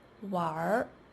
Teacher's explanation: In Erhua, when R is a suffix, the final N is dropped.